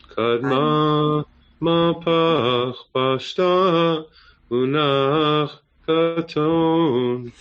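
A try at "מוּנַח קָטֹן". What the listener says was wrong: Don't go up on katon yet, though. Munach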